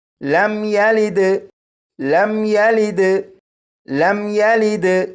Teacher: اس میم ساکن پر غنہ نہیں کریں گے